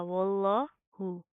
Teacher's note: यहाँ पर लफ्ज़ अल्लाह को मोटा पढ़ेंगे, क्यों? क्योंकि लफ्ज़ अल्लाह से पहले वाव के ऊपर ज़बर आ रही है